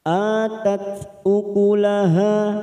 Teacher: Tak sukun mempunyai sifat hamas.